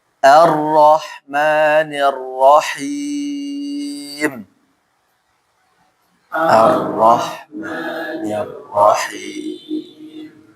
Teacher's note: Punggung ujung lidah menempel sama gusi. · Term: ro